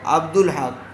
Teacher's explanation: دال کو لام سے ملا کر پڑھا، الف چھوڑ دیا گیا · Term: حروف قمری